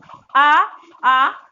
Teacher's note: आवाज कहाँ से निकल रही, कंठ से निकल रही है